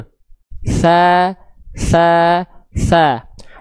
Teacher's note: lidah diarahkan ke ujung gigi dari atas kita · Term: huruf ts